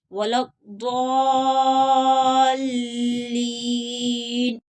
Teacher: ضاد بھی حروف مستعلیہ ہے اور آگے اس کے اوپر آگے مد متصل ہے تو اس کو 5 الف کی مقدار کے برابر کھینچ کر پڑھیں گے · لام کے اوپر شد ہے، یہ مشدد ہے لام، تو اس کو سختی کے ساتھ پڑھیں گے